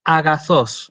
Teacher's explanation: ahí yo no hago una aspiración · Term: espíritu suave